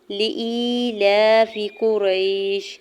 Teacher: یا ساکن سے پہلے حمزہ کے نیچے زیر یا مدہ ہو رہا ہے، دو حرکت کھینچ کے ادا کریں گے · لام کے اوپر کھڑی زبر ہے تو کھڑی زبر کو دو حرکت کھینچ کے ادا کرتے ہیں